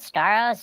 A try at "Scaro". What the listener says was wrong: Scaro, no S at the end. It's spelled Skaro.